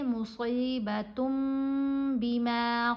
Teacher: ہم نے نون کی آواز کو میم کی آواز میں بدل کر پڑھنا ہوتا ہے